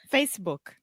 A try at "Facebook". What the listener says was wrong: So let me just point out 2 pronunciation things. First, the most important thing is what we call in linguistics the vogal de apoio. So you don't want to say Facebook.